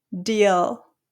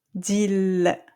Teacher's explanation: But if you say it the French way, you're going to feel it on your teeth, on the front teeth.